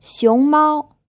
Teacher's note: the first syllable is in the second tone and the second syllable is in the first term this means